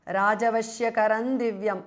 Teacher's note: Rajavashyakaram ends in Anuswara followed by Da. So it becomes Rajavashyakaram Divyam. Anuswara changes to N.